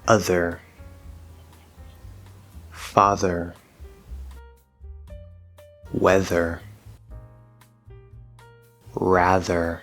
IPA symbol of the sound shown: ð